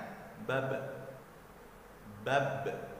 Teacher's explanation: posisinya qalqalah kubra, jadi dipantulkannya agak besar sedikit, berbeda dengan yang di tengah-tengah kalimat